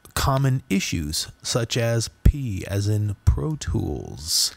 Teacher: a plosive p the puff of air coming off of the letter p